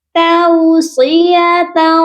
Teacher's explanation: تَوْصِيَةً، یہاں پر جو تا کے ساتھ واو ہے اس کو ہم لمبا نہیں کریں گے کیونکہ یہ واو لین ہے، واو ساکن سے پہلے زبر ہے، اس لیے.